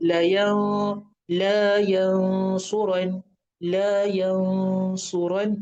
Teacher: ru dibaca tebal dan juga panjang, dua harakat.